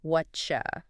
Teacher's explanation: the t sound changes to come more like the y sound it's next to and it turns into a chi sound like in cheese ah so what you start sounding like Whatcha.